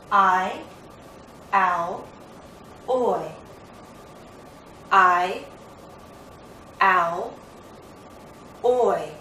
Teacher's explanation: the first sound is going to be louder and longer and then we glide into the second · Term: diphthongs